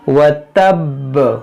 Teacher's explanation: वक्फ करेंगे साकिन होगा तो कलकला होगा, और खूब जमाव के साथ इसको पढ़ेंगे